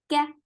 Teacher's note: Ka short. There is no hums in kaf when this is mutaharrika. Kaf will get hums when it has sakoon.